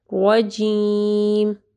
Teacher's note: را کو جو ہے ہیوی پڑھنا ہے اور واضح پڑھنا ہے